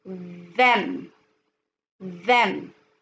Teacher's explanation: You have to put out your tongue and then say the letter D sound.